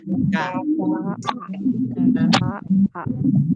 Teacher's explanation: Coba bilang K, pangkal lidah ya, paling dalam ya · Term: huruf kaf